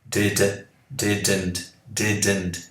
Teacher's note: Quando você fala did, a pontinha da sua língua tocou, né, no céu da boca